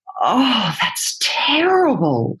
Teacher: close and what this gives you is a breath enos so you get a constant air flow where the air just is constantly escaping through the voice